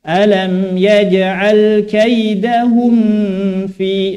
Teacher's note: kalau mim itu dua bibir sedangkan fa itu pertemuan antara bibir yang bawah dengan gigi seri bagian atas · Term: ikhfa